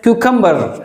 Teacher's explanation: The last r sound is silent, and therefore it is pronounced as cucumber.